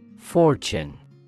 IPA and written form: ˈfɔːrtʃən (fortune)